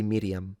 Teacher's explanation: I would roll the R a little bit, even though modern Israeli don't.